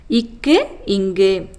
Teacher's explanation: நாவின் முதற்பகுதி அன்னத்தின் அடிப்பகுதியை பொருந்துவதால் பிறக்கும் மெய்ெழுத்துக்கள்